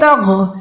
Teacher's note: تا یہاں پر باریک ہے، توغ نہیں پڑھ سکتے، اس کو پڑھنا ہے تغ، ٹھیک ہے.